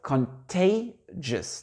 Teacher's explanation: l'accent tonique ici va se faire sur une voyelle ouverte, contay